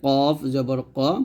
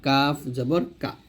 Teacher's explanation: কাফটা জিবার গোড়া হতে একটু আগে বাড়িয়া তার বরাবর তাল সঙ্গে লাগিয়ে পাতলা উচ্চারণ করব